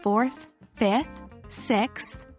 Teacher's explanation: H ending in ordinal numbers can sometimes be tricky pronunciation involves the tip of your tongue coming between your teeth making a th sound not a t or d sound it's a softer sound that takes some practice to get right